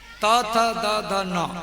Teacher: जब जीभ दांत में टकराएगी तब ये ता था दा ये बोलेगा। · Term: दंत वर्ण